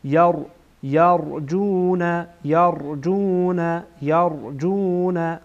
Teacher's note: را در اینجا پر خوانده میشه